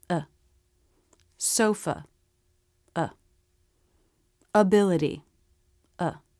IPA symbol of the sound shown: ə